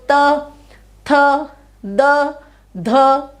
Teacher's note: सब में आपकी जीभ जो है वो दांतों को टच कर रही है।